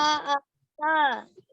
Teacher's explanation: Dan za itu di ujung lidah digigit sedikit ya.